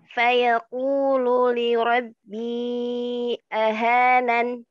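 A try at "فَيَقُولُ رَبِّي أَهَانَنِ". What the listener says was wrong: Enggak ada linya. Fayaqulu rabbi ahanan.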